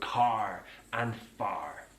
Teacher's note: Now, in most British English accents, it's non-rotic, so we don't use that R. But in the West Country, that R is pronounced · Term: rotic R, rhotic R